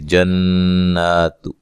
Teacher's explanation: جنات، نون مشدد پہ غنہ ضروری ہے، اور اس کو 1 الف کے برابر لمبا کریں گے، مد اصلی ہے، تا کو باریک پڑھنا، لمبا نہیں کرنا